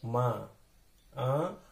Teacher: उसकी जो साउंड होती है नाक और मुंह दोनों से निकलती है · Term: अनुनासिक